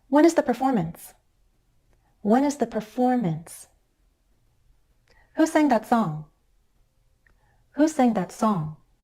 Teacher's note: you hear me either stepping down or gliding down in Pitch